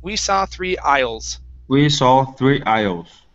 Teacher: the s in the middle there is silent